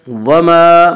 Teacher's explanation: الف مدہ کو ایک الف کے برابر کھینچ کر پڑھیں گے۔